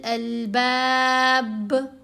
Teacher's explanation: با کے اوپر وقف کرنے کی صورت میں قلقلہ ہوگا